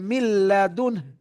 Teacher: নুন সাকিনের পর এদগামে বিলা গুন্নার হরফ লাম এসেছে তাহলে গুন্না ছাড়া মিলায় পড়তে হবে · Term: ইদগামে বিলা গুন্না